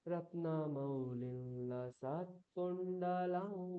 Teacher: ইয়কারটাকেই নাক দিয়ে উচ্চারণ, লকারটাকেই নাক দিয়ে উচ্চারণ। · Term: অনুনাসিক য় ল ব